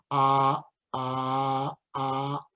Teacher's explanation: an interesting sound it's a global stop or glottal stop and what we do is we stop the air at the glottis so uh uh uh and that sound actually occurs in English